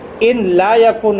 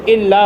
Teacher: نون اور لام قریب المخرج تھے، اس لیے نون کو لام سے بدل کر لام کا لام میں ادغام کر دیا تو الا ہو گیا